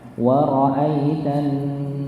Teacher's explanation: Gunnahnya dikarenakan ada tasydid, itu namanya gunnah musyaddadah. Gunnahnya termasuk gunnah yang tinggi, jadinya ditahannya lebih lama.